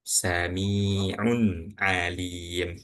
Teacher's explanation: Dibaca jelas tanpa dengung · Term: idhar